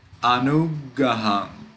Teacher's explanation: We made a little pause at the G. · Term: double consonant